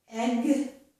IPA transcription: ɛg